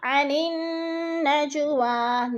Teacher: نون کے اوپر غنہ کرنا ہے، سختی سے جما کر پڑھنا ہے کیونکہ نون مشدد ہے، اور نج جیم پر قلقلہ ہے، اس کو ہلا کر پڑھیں گے۔